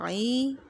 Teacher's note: وسط حلق یعنی حلق کا درمیانی حصہ، یہ وہاں سے ادا ہوں گی